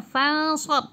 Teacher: nun tak ada baris iaitu bacaan dengung, ikhfa